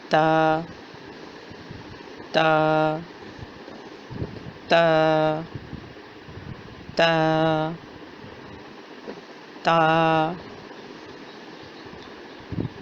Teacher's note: زبان کی نوک سامنے والے دو دانتوں کی جڑ سے لگے.